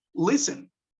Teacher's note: aquí la acentuación de listen está en la primera sílaba